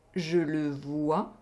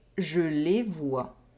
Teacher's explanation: We have the [ə] / [ø] sound in the first sentence, and the [e] sound in the second sentence. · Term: oral vowel sounds